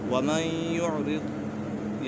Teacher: وَمَن يُعْرِضْ، یہاں پر ادغام یرملون ہے، نون ساکن کے بعد یا حروف یرملون میں سے ہے تو ادغام یرملون ہوگا، یعنی غنہ کر کے پڑھیں گے